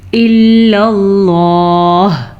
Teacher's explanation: لفظ اللہ سے پہلے زبر ہے تو ہم نے لفظ اللہ کو پر پڑھا